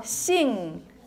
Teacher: it's a velar nasal